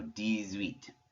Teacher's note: there in the middle you're hearing a little bit of a z sound · Since the H is silent, we're making a connection, it's called une liaison, with that X by making a Z sound